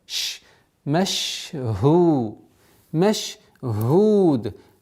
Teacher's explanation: Здесь нужно немножко, как и в свистящих звуках, у звука щин есть правило, свойство тафаши, это удержание немножко.